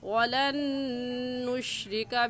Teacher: واو کا مخرج یہ ہے کہ دونوں ہونٹوں کو گول کرنے سے واو نکلتا ہے